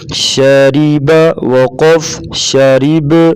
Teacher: را کے نیچے زیر ہوگی، را کو باریک پڑھیں گے